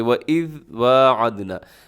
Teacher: وَإِذْ میں کیا کرنا ہے کہ ذال کو اپنے ہلانا نہیں ہے۔ وَاعَدْنَا، واو پہ اب کے ہونٹ گول ہو جائیں۔